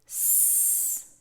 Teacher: The Seen and the Saad are both whispered sounds. So there's no voice coming out with these two sounds. So for the Seen, s, it's all air, there's no voice.